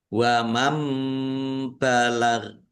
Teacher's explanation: nun sukun bertemu dengan huruf ba bacaan iklab. Nunnya dibaca mim dulu.